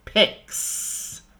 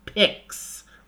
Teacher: guitar pick right is not voiced so you add the S which is unvoiced